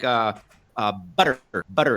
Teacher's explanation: the T becomes a D sound in American English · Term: a flap or a tap